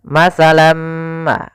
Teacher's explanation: tanwinnya hilang masuk kepada huruf setelahnya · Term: idgam